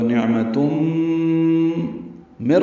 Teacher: تا کے اوپر تنوین ہے اور اس کے بعد میم آنے کی وجہ سے تا کو میم سے ملانا پڑے گا. ادغام ہو گیا، ادغام ناقص ہے، غنہ بھی ہوگا.